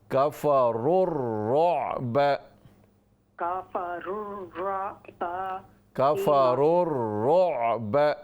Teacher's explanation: را کو را سے ملائیں گے